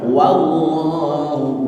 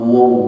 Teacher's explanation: wa itu ketika dipatah dibaca wa bukan wo. Maka di sini juga bacalah dengan harakat patah wallahu, bukan wo bukan, tapi wallahu.